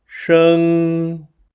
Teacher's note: The pronunciation of 生 is shēng, which may pose a challenge for non-Chinese speakers due to its retroflex start.